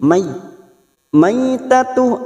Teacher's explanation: fathah bertemu ya sukun Huruf layin yaitu lunak melunakkan kedua huruf ini